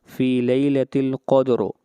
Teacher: فی لیلۃ القدر، یہاں پر قاف ہے، یہاں پر قاف کو موٹا پڑھا جائے